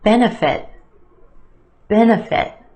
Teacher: we have a schwa in the second syllable economic benefit benefit three syllables here our emphasis on the first syllable the e benefit that second syllable